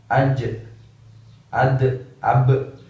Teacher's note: cukup dikasih konsonan sejenis huruf e sehingga pantulannya seperti huruf e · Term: qalqalah